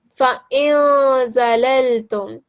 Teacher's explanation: you give it a 2-second light nasal sound.